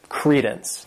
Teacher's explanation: This word has two syllables and the stress is on that first syllable